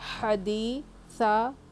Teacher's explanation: ہا جو کہ حلق کے بیچ والے حصے سے آتی ہے، ہا پہ زبر ہے، حرکت نہیں کھینچیں گے۔